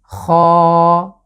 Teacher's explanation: বাংলায় শুধু খ উচ্চারণ করলেই যথেষ্ট, কিন্তু আরবিতে আমি কণ্ঠের শেষ যে জায়গাটা আছে সেটা আশ্রয় নিয়ে উচ্চারণ করছি